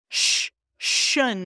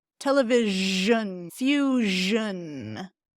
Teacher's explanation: So in Spanish it's more like /ʃ/ /ʃ/ but we wanna voice that one too. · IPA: /ʒ/